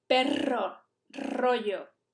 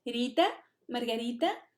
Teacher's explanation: una vibra la lengua varias veces y otra vibra una sola vez